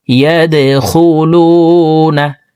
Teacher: ইয়া দাল জবর ইয়াদে, দাল কলকলার হরফ নিচের দিকে ধাবিত করে ধাক্কা দিয়ে উচ্চারণ